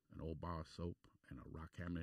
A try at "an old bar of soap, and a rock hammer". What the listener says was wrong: The voice, you have a little bit of a twang in there, but you were pretty good.